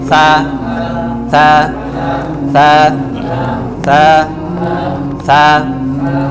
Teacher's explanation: তা, হ্যাঁ, তা বলেন, তা তা তা এটা একটু সমস্যা আছে, এটা হচ্ছে তা, অনেকে আমরা সা বলি, মানে বাতাস বাহির করি বলার সময়, হরফটা যখন উচ্চারণ হবে তখন বাতাস বের হবে না, শুধু স্পষ্ট হবে তা। হ্যাঁ, খালি বলবেন তা, জিব্বার আগা থেকে তা তা তা তা তা।